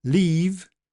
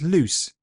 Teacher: The shorter one has the voiceless consonant after it. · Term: shortened